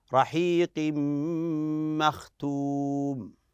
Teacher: نقول تنوين اتى بعد الميم والميم من حروف الادغام بغنه نقول ادغام ادغام بغنه هنا ادغام بغن رحيق مختوم وكذلك تلاحظ